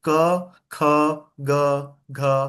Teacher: कहां से आवाज निकल रही है आपके? कंठ से निकल रही है ना।